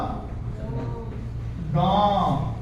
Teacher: देखेंगे इसमें क्या हो रहा आधा मुंह से आधा नाक से आधा मुह से आवाज आ रहा और आधा नाक से आ रहा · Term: चांद बिंदु